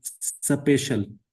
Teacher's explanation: In Punjabi we insert a shawa sound between two initial consonant clusters. · We insert a vowel in order to break the consonant cluster because for udu speakers some consonant clusters are not possible. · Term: epenthesis